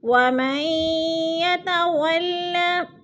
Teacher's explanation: میم کو یا کے ساتھ ملا کر پڑھیں گے، درمیان والا نون ساکن نہیں پڑھا جائے گا کیونکہ مشدد حرف اپنے سے پچھلے متحرک حرف کے ساتھ مل کر پڑھا جاتا ہے۔